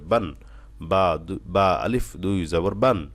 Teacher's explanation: বান এর গুন্না হয়ে গেল বান টান হয়ে গেল কোনটাই করা যাবে না স্পষ্ট করে তাড়াতাড়ি পড়তে হবে